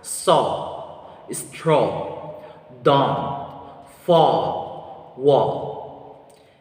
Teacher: And lastly, we have IPA vowel sounds oo, oo, oo. The muscular tension of this vowel sound is lax. The tongue height is mid. The tongue advancement of this vowel sound is back. And lip shape is rounded.